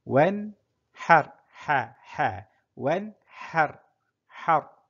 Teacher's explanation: Ra dibaca tebal. Kerana sebelumnya berbaris di atas